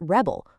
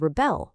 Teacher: If you put the stress on the first syllable, you get rebel, which is a noun